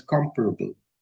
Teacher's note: But if you add the suffix able it becomes comparable. The stress shifts to the first syllable.